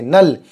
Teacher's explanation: نون لام پر جزم ہے، لام کو نون سے ملا دیں گے